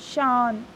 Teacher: इसकी साउंड अह के जैसे आती है और इसकी साउंड नाक से आती है, शांत. ठीक है, बोलते टाइम नाक से आवाज़ आती है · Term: अनुस्वार